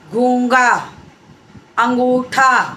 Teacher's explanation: पूरी तरीके से नाक से हवा नहीं निकलती, आधा होते होते वो अगले वाले वर्ण के साथ जुड़ जाती है आवाज़ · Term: अनुनासिक